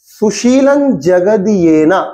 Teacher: double দ এরম নয়, একদম খুব হালকা করে বলছে